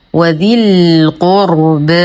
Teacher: الراء مفخمة لأنها ساكنة ما قبلها مضموم